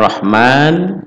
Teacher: Mad Thobi'i 2 harokat ya dua ketukan dua hitungan jari